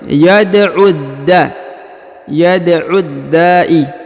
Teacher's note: Yad'u. Kemudian huruf u langsung disambung masuk ke huruf dal yang berharokat tasdid ya. Alif dan lamnya tidak dibaca.